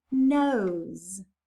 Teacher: s can get a voice line if it's voiced as in the word nose